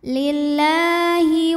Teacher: ada baris fathah panjang di atas huruf lam cara bacanya panjang dua harakat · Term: Mad Thobi'i